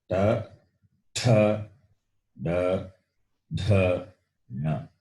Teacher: The tongue is curly or folded and touching the roof. And whatever the sound comes, they are called cerebrals.